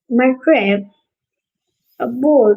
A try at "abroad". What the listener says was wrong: Abroad, abroad. It sounds like you're saying aboard. Abroad.